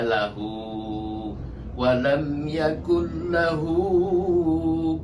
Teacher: hu-nya dibaca panjang dua ketukan aja, satu alif yang disebut dia mat silah iya, mat silah qasirah.